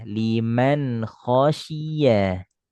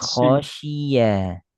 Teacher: shi lebih nyebar angin, lebih tafasyi nama sifat hurufnya tafasyi. Liman si khasyiya.